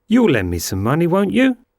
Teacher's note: On you, here the intonation is rising.